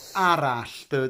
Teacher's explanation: with the ell sound you make a l sound, l, and then you just try and blow a little bit of air out the side of your tongue. Sh, l, sh, l, sh.